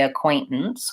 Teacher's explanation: because of the NT I'm not really releasing that T sound · Americans will often use a stop T in there